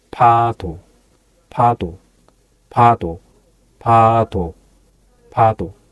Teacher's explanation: Cross your lips, then release more air like P in pen.